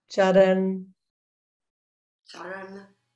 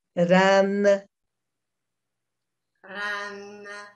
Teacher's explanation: this N is up on the roof of the dome of that palate in our mouth